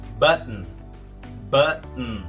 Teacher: E segundo, que esse O aí é uma letra muda na palavra. Ao pronunciar o T, você pula direto pro N. Fica button. · o som do U não é U, é A. E segundo, que esse O aí é uma letra muda na palavra.